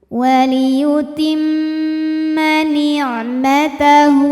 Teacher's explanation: Kemudian mimnya gunnah musyaddadah karena mim bertasydid. Cara bacanya dengung, bunyi M tahan sampai ada suara masuk hidung. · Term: ghunnah musyaddadah